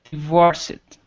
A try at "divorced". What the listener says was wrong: No, divorced. But we never, ever, ever in English pronounce the ED. When it's used as a suffix. What are the 3 sounds?